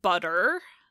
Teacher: that R is basically just an American English R by itself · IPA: [bʌt.ɹ]